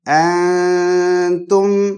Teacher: اس نون کو جو سکون اور جزم کے ساتھ ہے اس کو چھپانا ضروری ہے، کیونکہ اس کے بعد کا جو حرف ہے وہ ہے تا، جو اخفا لیٹر ہے، مطلب ہائیڈنگ لیٹر ہے، کہ اگر تھروٹ لیٹر کے علاوہ دوسرے لیٹرز آ جائیں گے تو ہم نون کو چھپائیں گے اگر نون کے بعد آئیں گے.